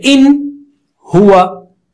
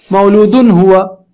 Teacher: ایک طرف نون ساکنہ ہے اور دوسری طرف دوسرا لفظ ہے جس کا پہلا حرف حلق کا حرف ہے، تو کوئی مسئلہ نہیں، دونوں کھلے رہیں گے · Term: اظہار